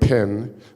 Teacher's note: put your own hand in front of your mouth and say pin and you will feel an explosion of air